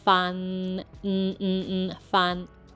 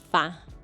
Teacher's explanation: It has a nasal sound, ends with your tongue touching the back of your top teeth.